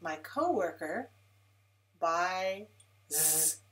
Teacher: Remember to put S at the end, which sounds like Z, sounds like Z voice sound, because buy is voiced, I is voiced, so Z is also voice.